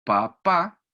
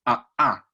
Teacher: genera un golpe a nivel de glotis es literalmente golpe clásico los pliegues vocales contactan con mayor fuerza hay un aumento de la intensidad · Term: golpe de glotis